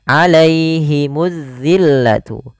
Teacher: alif lam yang kita tulis tapi kita tidak baca. Langsung ditasydidkan atau diidghamkan ke huruf zal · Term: alif lam syamsiyah